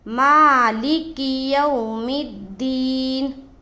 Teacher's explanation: ماں کو کھینچیں گے، ماں کے اوپر کھڑا زبر ہے